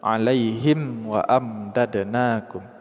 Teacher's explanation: Lakumul qarrata alaihim wa amdadnakum. Mim mati bertemu dengan waw, izhar syafawi. Kita baca secara jelas tanpa ada dengung.